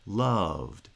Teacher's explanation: the falling pitch happens across the pronunciation of a single syllable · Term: monosyllabic foot